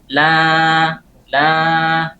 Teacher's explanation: ketika kita mengucapkan huruf alif, maka mulut terbuka, posisi lidah dalam keadaan santai, kemudian pita suara itu ada getarannya, bergetar